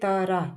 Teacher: त्र एक साथ बोलने से त्र आ रहा है। और उसको थोड़ा सा धीरे बोलने से तरा तो त और र आ गया। ऐसे करके और हलंत लगा देना है।